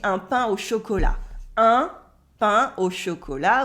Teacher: Un pain au chocolat with the un at the beginning, and you don't say the T of chocolat